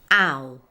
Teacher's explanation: If you were previously taught to start this dip thong with the a sound, as in cat, it can sound too exaggerated